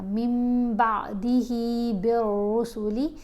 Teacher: نون ساکن ہو یا تنوین ہو اور اس کے بعد حرف با ہو تو آپ نے نون کی آواز کو میم کی آواز کے ساتھ بدل کر پڑھنا ہے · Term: قلب